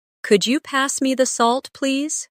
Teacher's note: Listen to the way my voice rises on Could you? and falls gently at the end.